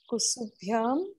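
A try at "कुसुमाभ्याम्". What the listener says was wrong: It will, kusum is a whole word.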